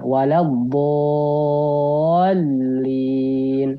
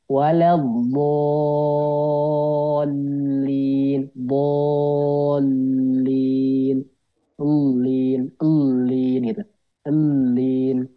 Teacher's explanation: Kalau di sini nabarnya adalah di huruf lamnya. Jadi bukan di huruf madnya. Jadi ketika masuk ke lamnya.